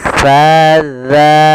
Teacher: menyempurnakan daripada makhraj huruf sa, yaitu kita samakan dengan huruf zal, yaitu ujung lidah kita menempel dengan gigi sari atas